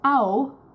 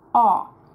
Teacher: In German, we pronounce it as au, while in English, if it, appears, it normally is pronounced as a, as in authority.